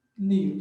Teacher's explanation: Separei e vi que a sílaba forte é o nil. Então, ela é oxítona.